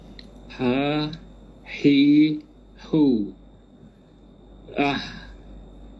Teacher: Sifat huruf dia hams, keluar udara kan.